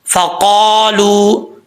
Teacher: فا کا مخرج ہے اوپر والے دانتوں کا جو کنارہ ہے نیچے والے ہونٹ کی تری والی جگہ پہ لگے گا تو فا پڑھا جائے گا